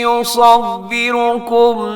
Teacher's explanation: یہاں پہ صاد ہے اسے موٹا رکھیے گا